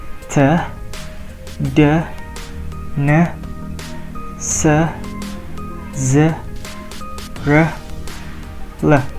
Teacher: Okay, so for the fourth one, it's called alveolars. So it forms when we put our tongue on the alveolar ridge. So alveolar ridge is basically like the behind side of our top teeth, like this.